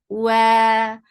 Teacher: makhraj of waw is circling your lips, make it 2 counts long